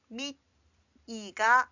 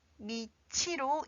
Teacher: 티읕 받침 뒤에 이 모음이 이어진 경우에는 티읕이 치읓으로 바뀌고 이 모음이 합해져서 치로 읽게 됩니다